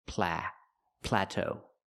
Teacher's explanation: We have to stress both syllables and say pla plateau.